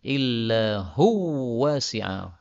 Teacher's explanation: wawu ketemu wawu maka idgham